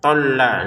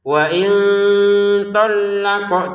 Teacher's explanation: tholla lamnya ditekan qofnya dipantulkan. Wain thalaqunna munya dua harakat nunnya didengungkan.